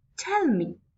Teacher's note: so my stress is on tell so first is stressed tell and me is unstressed